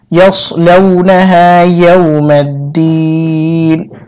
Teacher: يا واو زبر ياو، ميم دال زبر مد، يوم الدال يزد دي زير بام پشت جزم لا تكليف টেনে পড়তে হয়, নুন সেননি يوم الدين, অক্ফের সময় নুন সাকিন হবে এবং এখানে 3 আলিফ লম্বা করে পড়তে হবে। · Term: মদে আরদি